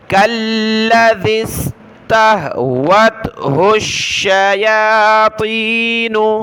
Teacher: ہا کو آگے ملائیں گے شین کے ساتھ، الشیاطین، کالذی استہ، ذال پر زبان نکالیں، کالذی استہوتہ الشیاطین۔